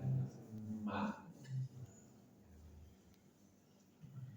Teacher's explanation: mim dua bibir dipertemukan dan dirapatkan.